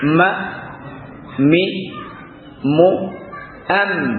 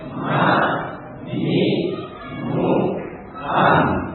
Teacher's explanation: ini mim dengan dikatupkan kuat, ya, dua bibir.